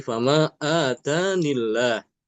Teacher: lafaz jalalahnya tidak dibaca dengan ee tafhim, tidak dibaca tebal, bukan dibaca fama eh famaillah famaillah, tapi fama atanillah.